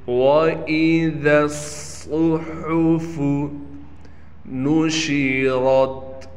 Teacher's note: نون کو بالکل کھینچنا نہیں ہے، شین میں تفشی یعنی شین کی آواز کو صاف کر کے پڑھیں گے۔ · ذال نرم حرف ہے اور صاد سیٹی والا یعنی سخت حرف ہے، صاد کو موٹا بھی پڑھنا ہے۔ اب نرم اور سختی دونوں ایک ساتھ جمع ہو گئے، لہٰذا دونوں کا خیال کر کے پڑھنا ہے۔